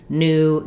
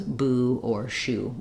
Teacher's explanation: new does not have the gliding yes sound it is the same as Buu or Shu in English um